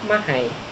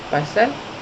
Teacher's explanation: dialek Kedah huruf L, sebutan L ditukar kepada bunyi I